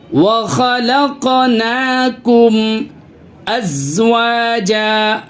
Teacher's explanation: قاف کے اوپر جو ہے سکون ہے، اس کی وجہ سے آواز ہل رہی ہے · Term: قلقلہ